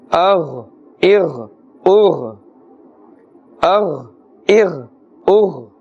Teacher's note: These two letters are also qareeb as-sawt, but keep in mind the kha is pronounced with a full mouth and the scraping sound. Ghain is also pronounced with a full mouth.